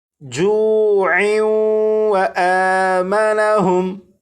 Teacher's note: اگر اس لفظ پر وقف نہ کرنا ہو بلکہ اس لفظ کو آگے اس لفظ کے ساتھ ملا کر پڑھنا ہو تو پھر یہاں پر تنوین اور تنوین کے بعد واو حروف یرملون میں سے ہونے کی وجہ سے یہاں پر ادغام ہوگا، اور پھر اسے اس طرح پڑھیں گے جوع و آمنہم.